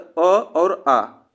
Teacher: अगर स्वर पूछा जाए तो अ और आ, इसमें कंठ से उच्चारण होते हैं